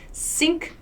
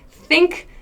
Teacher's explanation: sink teeth together think tongue between your teeth